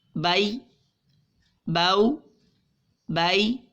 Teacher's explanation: حروف لین کو بغیر کھینچے بغیر جھٹکا دیے نرمی سے معروف پڑھیں گے